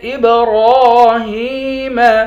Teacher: حمزے کو با کے ساتھ ملا کر با پر قلقلہ کریں گے، را پر کھڑا زبر ہے، را کو ایک الف کی مقدار کھینچ کر پڑھیں گے، ہا کو یا کے ساتھ ملا کر یا کو بھی ایک الف کی مقدار کھینچ کر پڑھیں گے، یا حروف مدہ ہے۔